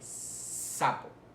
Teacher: hay flujo de aire pero no vibra en las cuerdas vocales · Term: sordas